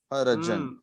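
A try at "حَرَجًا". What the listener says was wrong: روکو نہیں کھینچنا ہے ہا کے اوپر کیا ہے رو کے اوپر کیا ہے جیم کے اوپر کیا ہے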